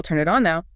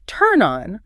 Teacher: So instead, the N sound at the end of turn just slides right over. It provides a runway for the O.